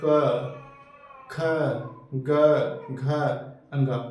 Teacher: क्यों कहते हैं कंठ व्यंजन? क्योंकि का वर्ग में के व्यंजन को जब हम लोग बोलते हैं तो हमारे कंठ से ध्वनि निकलती है